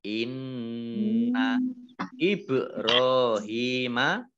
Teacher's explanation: ba sukun bacaan kolkolah ya, ditampakkan kolkolahnya, ditampakkan pantulannya.